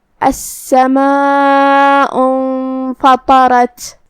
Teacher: یہ حمزہ وصل ہے. حمزہ وصل کو ادا نہیں کرنا ہے